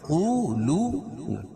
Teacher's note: الذین یقولون دونوں جگہ واو مدہ ہے، قو کو پر پڑھیں گے، کیوں؟ قاف حروف مستعلیہ میں سے ہے